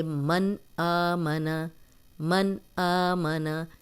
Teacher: میں نے آپ کو پہلے بھی بتایا تھا کہ الف وہ ہے جس کے اوپر کچھ بھی نہ ہو اور جس کے اوپر زیر زبر پیش جزم آ جائے وہ حمزہ ہے، تو یہ حمزہ آ گیا۔ تو یہاں پہ ہم سیدھا پڑھیں گے من آمنا، من آمنا، کوئی غنہ نہیں کر رہے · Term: نون ساکن